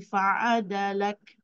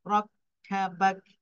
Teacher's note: Bila kita ada kaf di hujung tu, mesti ada sedikit angin lah. Bukan fa'adalak dia, tapi fa'adalak.